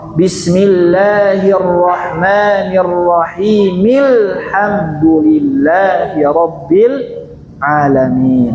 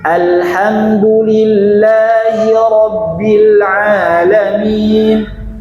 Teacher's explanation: kalau wasal dari ayat sebelumnya bismillah hamzahnya hilang enggak ada